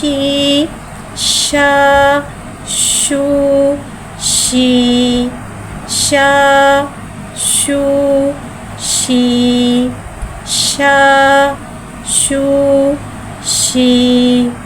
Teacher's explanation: शीन को एक अलिफ यानी 3 हरकत के बराबर खींच के पढ़ेंगे। शीन में तफशी वाली सीटी को ज़ाहिर करके पढ़ेंगे। शीन के नीचे ज़ेर है, ज़ेर को नीचे गिराते हुए अदा करके पढ़ेंगे।